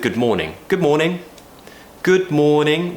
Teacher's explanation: We're just rising, and then falling